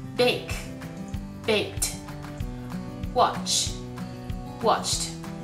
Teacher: 動詞の基本形の最後が無声音である場合、後に続く▁ED▁の発音も同じく無声音の▁T▁になります